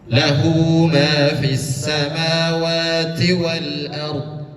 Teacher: Bukan lah tetapi dua harakat dipanjangkan.